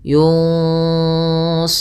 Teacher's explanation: Yunsarun ikhfa, nunnya samarkan kepada huruf fa, ke huruf shad dan ditahan